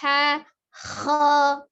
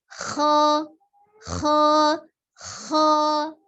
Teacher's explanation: Kho diucapkan dari tenggorokan bagian atas dengan itmamul harokahnya, pengucapan fathahnya tetap terbuka, rongga mulutnya. Jadi kho tidak dengan monyong kho, ya.